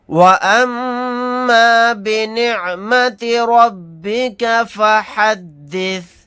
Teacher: نیم کے اوپر تشدید ہے تو یہاں پر غنہ کر کے پڑھیں گے